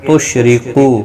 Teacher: را زیر کی وجہ سے باریک پڑھا جائے گا